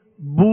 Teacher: دونوں ہونٹوں کو کامل گول کریں گے۔ اگر کامل گول نہیں کریں گے تو مجھول ہو جائے گا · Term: معروف